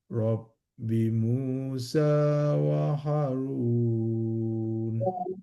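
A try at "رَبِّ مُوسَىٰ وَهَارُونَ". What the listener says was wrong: Harun, panjangkan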